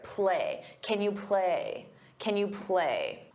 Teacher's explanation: When it's an auxiliary verb, we pronounce it as kin. K can unstress because the main verb is what you hear. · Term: unstressed